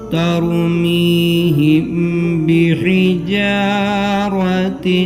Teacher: اور اخفا شفوی. میم ساکین کے بعد با آئے تو گنہ کے ساتھ ادا اخفا ہوگا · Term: اخفاء شفوی